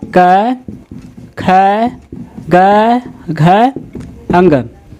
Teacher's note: कंठ यानी कि जो गला से आवाज निकलता है